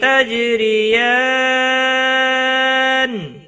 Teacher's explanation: جیم ساکن پر قلقلہ ہوگا، را زیر کی وجہ سے باریک پڑھا جائے گا